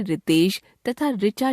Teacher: हिंदी भाषा भाषी लोग इसका उच्चारण र जमा ई री के रूप में करने लगे हैं। इस तरह हिंदी में रितेश तथा ऋचा शब्दों की पहली ध्वनि के उच्चारण में कोई अंतर नहीं रह गया है। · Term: री स्वर का उच्चारण